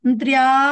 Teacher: ఆ త్ర పూర్తిగా పలకకుండా అక్కడ యా కూడా పలకాలి.